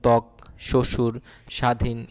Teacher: শব্দের আদিতে হচ্ছে ব ফলা উচ্চারিত হয় না